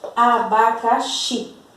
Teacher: Aquela que eu pronuncio com mais força é o xi. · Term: sílaba tônica